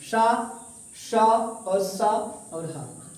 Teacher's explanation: जब इसमें हवा बाहर निकलती है तो रगड़ खाकर निकलती है, अर्थात इसमें गर्म हवा निकलती है। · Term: ऊष्म संघर्षी